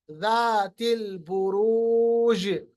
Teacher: जीन पे कलकला वाज़ेह करेंगे, कुबरा है।